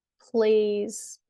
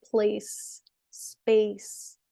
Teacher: plays has a Z sound, place and space have the S sound